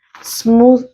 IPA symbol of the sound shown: ð